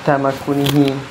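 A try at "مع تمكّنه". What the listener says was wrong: Pakai tasdid.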